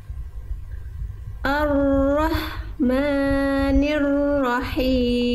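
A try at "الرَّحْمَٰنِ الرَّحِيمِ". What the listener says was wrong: Ya, maknya jangan kepanjangan. 2 harokat. Ar-Rahmanir Rahim.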